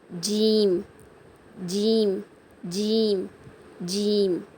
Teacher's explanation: இருக்குல்ல அதுல உங்க நுனி நாக்கால டச் பண்ணி லேசான சவுண்டு ச ஜீம் உங்க நடு நாக்கால மேல அன்னத்தை தொட்டு சொல்லணும்